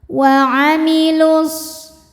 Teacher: Kemudian alif lamnya dinamakan dengan alif lam syamsiyah, sebab alif lam menghadapi huruf syamsiyah yaitu huruf shad. Maka alif lam tidak dibaca atau diidghamkan ya.